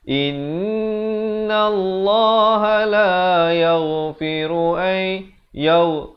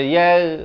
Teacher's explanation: Yaghfiru di sini idgham bi gunnah. Masukkan beserta dengung 2 harakat.